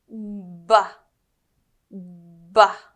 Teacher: First things first, let's talk about the position of your lips. With the B sound, your lips come together and then open like a little pop. It's like a little explosion.